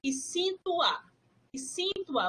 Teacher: Você percebe que esse O até vira um U. E é junto com o A quando você está falando.